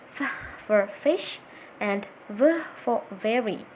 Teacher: labiodentals, formed with the bottom lip and the top teeth.